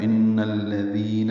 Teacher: ان میں نون مشدد پہ غنہ ہے، نون کو الذین کے لام سے ملانا ہے، تو ان الذین ہوگا، دال کو نرمی سے پڑھیں گے اور 2 حرکات لمبا کریں گے، مد اصلی ہے یا مد۔